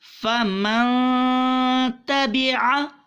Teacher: آئیے، جب بھی آئیں گے ہم نے اخفا کرنا ہے، مراد غنہ کرنا ہے. یہ غنہ آدھا ناک میں اور آدھا گلے میں رہے گا، اس کو کہتے ہیں اخفا.